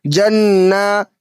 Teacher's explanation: नून के ऊपर तशदीद है तो नून मुशद्दद में गुन्ना हुआ करता है, इसलिए यहाँ पे गुन्ना करके पढ़ेंगे और खड़ा ज़बर को थोड़ा सा کھینچ کر پڑھیں گے کیونکہ کھڑا زبر الف مدہ کے برابر ہوتا ہے۔